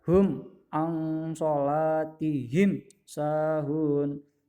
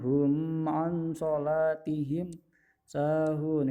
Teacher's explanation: di sini ketemunya ain bukan mem ataupun ba, dibaca jelas. Jadi dibaca hum ang sholatihim sahun. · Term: idhar syafawi